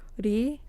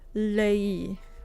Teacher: the difference between tapping your tongue on the roof of your mouth and holding your tongue on the roof of your mouth while you make a sound